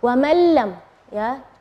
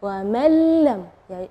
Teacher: idgham bila gunnah, tidak ada dengung ya